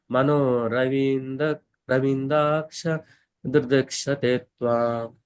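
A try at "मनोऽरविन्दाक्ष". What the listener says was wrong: Okay, యాక్చువల్గా ఇది అరవింద. So మనం అనేటప్పుడు ప్రభుజీ కొంచెం ఆను కూడా కలపాలి. ఓకే, లేకపోతే రవింద అని అయిపోతుంది. సో మనోరవింద అని కొంచెం మనం ఉచ్చారణ ఉండాలి, ఆ అని. ఓకేనా, లోపల కొంచెం ఆ అని చదవండి.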